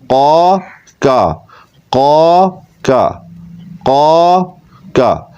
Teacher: قاف میں قلقلہ بھی ہوگا